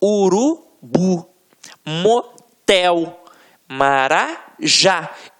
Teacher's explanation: você vai perceber que realmente a pronúncia da última sílaba ficará mais forte · a oxítona tem a sílaba tônica na última sílaba